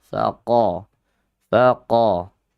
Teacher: qa, huruf isti'la. Dan dia juga memiliki sifat syiddah kuat ya. Faqa, faqa, kuat dia.